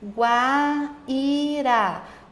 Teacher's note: O i está sozinho e tem um ditongo, mas o u é sua semivogal e o a é a sua vogal. Então, partiu de uma semivogal para uma vogal, o ditongo é crescente. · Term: ditongo crescente